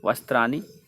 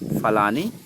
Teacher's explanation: दंत न टवर्गीय ण हो जाता है दंत न का